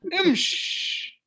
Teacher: They even because it's the end of the word, they don't pronounce the kasra, so they suffice with a sukoon.